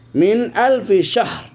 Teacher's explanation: নুন সাকিন স্পষ্ট হয়েছে কোন গুন্না হবে না মিন আলফির এখানে ওয়াকফের জন্য তানবিনকে ফেলে দিয়ে জজমের মত পড়া হয়েছে